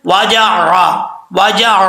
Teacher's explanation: اچھا جی، یہاں پہ عین ہے، عین کو پڑھتے ہوئے آپ نے خاص خیال رکھنا ہے کہ حمزے کی آواز نہیں آنی چاہیے